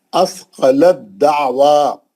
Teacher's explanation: اور دوسری مثال کیا ہے، اثقلت دعوا، اب تا نہیں پڑھیں گے، اب دال سے ہی پڑھیں گے، تا جو ہے دال کے اندر چلے گی